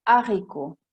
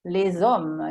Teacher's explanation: Queste due parole hanno una H aspirée davanti che non fa fare la liaison